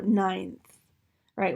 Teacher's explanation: our tongue is going to scooch up behind those top teeth in preparation for that interdental fricative, the interdental theta. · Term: dentalize